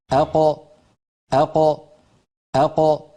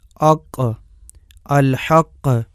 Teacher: زبان کی انتہا اور گوشت والے نرم تالو سے قاف ادا ہوتی ہے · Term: قاف کا مخرج